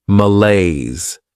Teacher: This word has two syllables and the stress is on that second syllable.